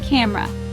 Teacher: Three-syllable word. Stress is on first syllable